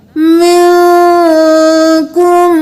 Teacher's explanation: اخفا ہوگا، یعنی ناک میں آواز کو چھپائیں گے